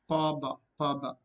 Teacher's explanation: Just by using two lips they are produced or articulated. Pa, ba. Pa is voiceless, ba is voiced. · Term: bilabial